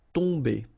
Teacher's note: Okay, so remember, you've got O-M here, but after that you've got a consonant, so it does mean that this combination of O-M will give you the sound on. Okay, you don't pronounce the M at all, so it's really a nasal, so it goes in your nose.